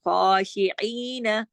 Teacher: ای جو ہے یہ بھی کھینچے گا دو حرکات، اس کے ساتھ یا مدہ ہے لیکن نون نہیں کھینچے گا